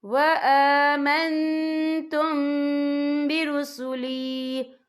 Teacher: یا دیکھیں وآمن، یہاں نون ساکن ہے، نون ساکن کے بعد جو ہے تا ہے، تا جو ہے اکفا کا ورڈ ہے، تو ہم یہاں اکفا کریں گے، نون ساکن کی آواز کو ناک میں چھپائیں گے · اور آگے دیکھیں وآمنتم، یہاں میم ساکن ہے، میم ساکن کے بعد جو ہے با آ رہا ہے، تو یہاں پر اکفا شفوی ہوگا، تو ہم یہاں غنہ بھی کریں گے، اور غننے کی مقدار جو ہے 2 سے 3 سیکنڈ ہوگی.